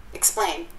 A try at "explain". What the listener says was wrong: Explain. Bài này bà đọc ngắn quá à. Từ từ slow motion chút nè. X xong rồi explain, nó là vần A chứ không phải là blend blend blend vậy đâu. Thì bả đọc nhanh cho nên là bạn nghe không quen bả sẽ nghe vậy. Tưởng nó là blend blend chứ không phải đâu. Không phải là E không mà là A. Explain. Cái miệng, cái khẩu hình phải đúng ra.